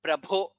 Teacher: shrotumichhami, cha is mahaprana, prabho, bha is mahaprana